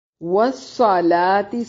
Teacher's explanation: صاد کو موٹا اور لام کو باریک